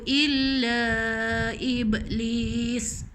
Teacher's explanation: Sebelum sin tu ada ya mat. Jadi dia kena panjang.